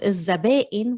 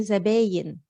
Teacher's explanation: we tend to ignore the hamza and sometimes we change it to a ya. So instead of الزبائن, we say زباين.